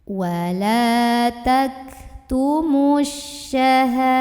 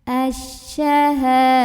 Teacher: Karena ada alif lam ta'rif yang ketemu sama huruf syamsiyah yaitu shin. Maka alif lam ini nggak perlu dibaca, ya, bacanya diidghamkan, dimasukkan ke shin. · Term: alif lam syamsiyah